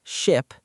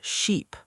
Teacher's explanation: They are minimal pairs, words that differ by only one sound. Ship has a short I sound like an it. Sheep has a long E sound like an eat.